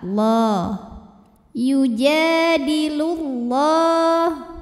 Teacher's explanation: lam pada lafaz Allah disebut dengan e dibaca secara tafkhim ya lam jalalah dibaca secara tafhim Kenapa karena huruf sebelumnya berbaris damah maka baca lamnya tebal · Karena huruf sebelumnya berbaris dhammah, maka baca lamnya tebal. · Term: lam jalalah dibaca secara tafkhim